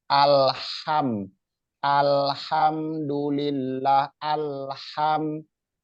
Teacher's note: asal tempat keluarnya hurufnya atau makhorijul hurufnya itu berada di tengah-tengah tenggorokan